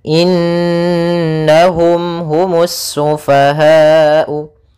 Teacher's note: Yaitu nunnya kita tahan dulu suaraannya sepanjang 2 harakat, baru dimasukkan kena sambil suara nunnya dimasukkan ke rongga hidung kita karena dia gunnah